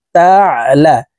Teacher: আইন হরফকে হলকের মধ্যখান থেকে চাপ দিয়ে উচ্চারণ করতে হবে, কারণ আইনের মাখরাজ হলকের মধ্যখান থেকে হবে। তা আইন জবর তা, লাম জবর লা।